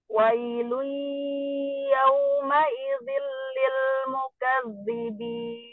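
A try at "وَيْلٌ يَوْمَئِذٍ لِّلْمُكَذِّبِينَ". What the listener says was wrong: Oh, jatuh tebel. Zalnya jatuh tebel. Wailun yawmaidhin lilmukadzibin.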